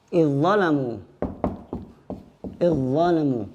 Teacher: idzalamu langsung masuk ke huruf berikutnya. Karena di sini hukum semuanya adalah idgham.